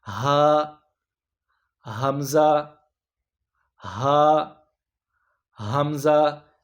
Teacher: آپ کا حلق کا جو سب سے نچلا حصہ ہوتا ہے، سینے کے قریب جو ہوتا ہے، وہاں سے حمزہ اور ہا ادا ہوتے ہیں. ہا حمزہ ہا حمزہ، یہ سینے کے قریب جو آپ کا حلق کا سب سے نیچے والا حصہ ہوتا ہے، یہاں سے ہا حمزہ یہ ادا ہوتے ہیں.